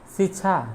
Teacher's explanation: नहीं दंत सा नहीं होता है। शिक्षा में तालव्य सा होता है। इसलिए ये शिक्षा सही है।